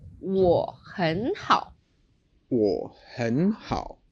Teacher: the tone in 我 is a little bit different. It sounds shorter, right? Yeah. So if we give the full third tone, 我很好, then Chinese would take forever. · It goes 3, 2, 3. · So we don't change that first tone, 我. We keep it as a third tone, and then 很好. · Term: half third tone